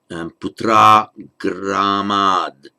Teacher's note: And the gramat, the art, in its raw form, the word on its own, the word would be written with an art, with a T, followed by a vowel now, so the T becomes voiced to a D